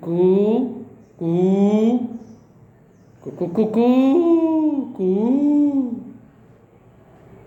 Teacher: ऊ में एक मात्रा का समय लगता, ऊ में 2 मात्रा का समय लगता, ऊ में त्रिमात्राओं का समय अर्थात अधिक मात्रा। · क्रमशः कू में ह्रस्व, कू में दीर्घ, कू, वो प्लुत है, जो कुक्कुटक माने मुर्गी की जो आवाज है। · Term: ह्रस्व दीर्घ प्लुत